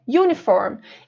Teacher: é como se tivesse um sonzinho de Y antes do U. Uniform. Então, esse sonzinho de Y é considerado uma consoante, um som de consoante, né?